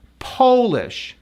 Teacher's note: This word is a proper noun, and you capitalize the P, and it's pronounced as Polish. The first syllable is stressed with the O-O-O sound.